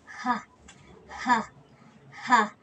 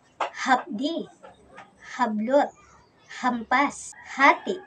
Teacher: At ang panghuli ay ang glutal. Ito ay may isang ponema na napabilang sa pasutsot. Ito ay ang ponemang H na binibigkas na ha, ha, ha.